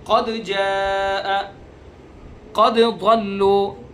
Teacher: جو صفات دال کے اندر ہیں وہی صفات جیم کے اندر ہیں، تو لہذا اس کے اندر تقارب ہے، تقارب کی وجہ سے ادغام ہونا چاہیے تھا، لیکن یہاں ادغام نہیں ہو رہا ہے، تو اس وجہ سے یہاں بھی اس کو صاف صاف واضح کر کے پڑھیں گے۔